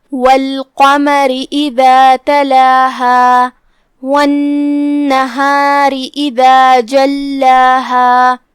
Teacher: کلمت والنهار میں یہاں بھی نون پہ تشدید ہے، لہذا 2 حرف کی مقدار میں نون کو پڑھنا ہے. آخر میں یہاں را کے نیچے زیر ہے تو یہاں را کا حکم ہے ترقیق، لہذا اسے ہلکی آواز میں پڑھنا ہے. · دال کی ادائیگی زبان کے سر اور اوپر والے دانتوں کے اندرونی کناروں سے ہے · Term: حرف الدال